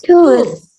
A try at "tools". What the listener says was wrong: Okay, remember there is letter S here. Okay, so you should pronounce the letter S. Tools.